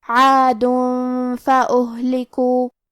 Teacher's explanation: ہم یہ تنوین کو چھپاتے ہوئے لیکن غنہ کے ساتھ یہ حکم کو ادا کریں گے · ہا ساکن ہے، لہذا ہمیں ہا کو ظاہر کرنا ہے اور ہا کی ادائیگی حلق کے نیچے والی حصے سے ہے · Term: اخفاء